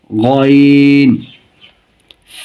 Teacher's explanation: উচ্চারণের স্থান কণ্ঠনালীর শেষ থেকে